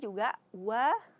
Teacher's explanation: wa memonyongkan bibir karena dia ee ee makhrajnya di dua bibir